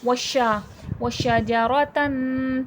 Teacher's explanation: व शजरतन शीन में तफशी शीन की आवाज फैलाव के साथ पढ़ी जाएगी